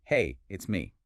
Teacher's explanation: the intonation generally rises a little bit at the beginning or through the middle of the sentence, and then it falls at the very end. Like, hey, rise, it's me, fall. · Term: rise-fall shape